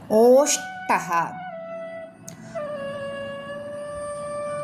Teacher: തൊണ്ടയും ചുണ്ടും ഉപയോഗിക്കുന്നു മലയാളത്തിലെ ഓ എന്ന ദീർഘസ്വരത്തിന് തുല്യം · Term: കണ്ഡൗഷ്ട്യം